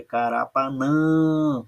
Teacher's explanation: Quando a sílaba tônica é a última, nós chamamos de oxítona, olha aqui, carapanã, olha como o nã é a sílaba tônica, é a última, então ela é uma oxítona